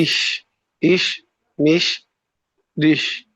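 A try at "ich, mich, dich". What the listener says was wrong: আপনি তো তালব্য স্বর মতো উচ্চারণ করছেন, বা এইচ এস এর মতো উচ্চারণ করছেন। ইহ, মিহ, ডিহ। এরকমই, কিন্তু হি বলার সময় তালুর সাথে অগ্রভাগ লাগে। আপনারটা তালব্য স্ব বা ইংলিশের ওয়ার্ড অ্যাজ ইস, যে উচ্চারণ না, ইস, মিশ, ডিশ এভাবে হয়ে যাচ্ছে। কিন্তু উচ্চারণটা ইহ, মিহ, ডিহ।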